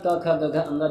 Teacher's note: कंठ में क ख ग घ अंग जिसे हम क वर्ग भी कहते हैं